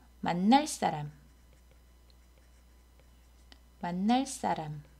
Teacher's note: 관형사형 어미 을 뒤에서 안울림 소리가 경음화가 됩니다